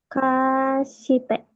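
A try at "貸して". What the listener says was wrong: Satu napas, jangan dipanjangin kan. Ini jangan dibaca si, baca s aja. Jadi ingat ya, si itu eh, sebaiknya tidak dibaca si. Dimanapun nanti kalau kalian temu si di apa di tengah, kalau di awal baca si ya. Tapi kalau di tengah atau kalau simas pakai si ya, simas ya.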